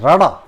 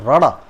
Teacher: ਜਿਹੜੀ ਜੀਭ ਹੁੰਦੀ ਹੈ ਉਹ ਤਾਲੂ ਦੇ ਨਾਲ ਛੂ ਕੇ ਫੜਕ ਕੇ ਭਾਵ ਕੰਬ ਕੇ ਇੱਕਦਮ ਬੜਾ ਤੇਜ਼ ਕੰਬ ਕੇ ਹੇਠਾਂ ਨੂੰ ਆ ਜਾਂਦੀ ਹੈ। ਇਸ ਧੁਨੀ ਦੇ ਉਚਾਰਨ ਸਮੇਂ ਜਿਹੜੀ ਜੀਭ ਹੁੰਦੀ ਹੈ ਭਾਵ ਸਾਡੇ ਤਾਲੂਏ ਦੇ ਨਾਲ ਪਹਿਲਾਂ ਸਪਰਸ਼ ਕਰਦੀ ਹੈ ਅਤੇ ਫਿਰ ਸਪਰਸ਼ ਕਰਕੇ ਉਹ ਹੇਠਾਂ ਵੱਲ ਆ ਜਾਂਦੀ ਹੈ। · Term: ਫੜਕਵਾਂ